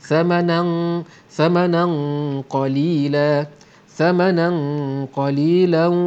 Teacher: Nah, nampak adanya tanwin bertemu dengan qaf ialah hukum ikhfa hakiki. Ikhfa di sini tebal kerana nun mati bertemu dengan huruf ikhfa yang tebal yang isti'la, maka bunyi ikhfa-nya pun tebal